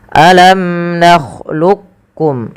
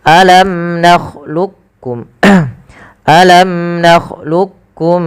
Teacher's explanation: Nah, dalam membaca alam nakhluqukum ini ada dua pendapat. Yang pertama dengan idgham kamil, yang memasukkan langsung huruf qaf kepada huruf kafnya secara utuh, dan yang kedua masih menyesuaikan yaitu idgham naqisnya.